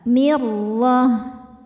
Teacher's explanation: Huruf ra dibaca tafkhim karena berharokat fathah. Maka ra-nya tebal.